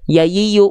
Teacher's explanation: tengah lidahnya mengarah ke langit-langit tapi tidak boleh menyentuh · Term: huruf ya